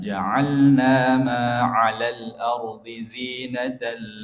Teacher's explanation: Ain itu tempatnya di leher, di tenggorokan.